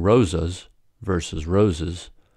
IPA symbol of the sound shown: ə